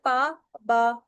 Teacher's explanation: हमारे दोनों लिप्स से कोई साउंड प्रोड्यूस हो रहा है तो वो बिलेबियल साउंड है, यानी कि पा बा।